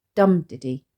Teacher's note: didy which due to the falling nature of the Rhythm where a stressed syllable is followed by two unstressed syllables makes it ponderous and heavy yet Relentless